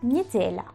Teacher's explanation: Y la L se convierte en una L suave.